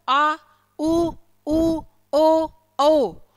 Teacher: इनको बोलते समय हमारी जीभ पीछे की ओर खींचेगी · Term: पश्च स्वर